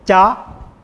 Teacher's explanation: Again, palatal sounds are pronounced by touching the middle part of the tongue, touching the palate or the roof of the mouth. So cha, this is the aspirate sound. You have to add a puff of air.